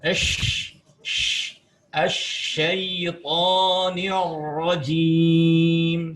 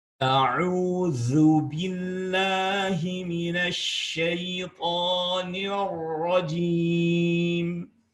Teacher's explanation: huruf shin mempunyai sifat al-fashi yang berarti menyemburkan nafas sehingga membentur pada dinding-dinding gigi depan kita